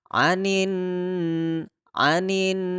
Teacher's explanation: Jadi noonanya itu kita dengungkan tiga harokat karena bukan bukan masuk kepada tekanan tapi didengungkan jadi kita harus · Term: ghunnah, gunnah